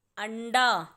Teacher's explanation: वो जो ण की आवाज आ रही है वो अ के बाद आ रही है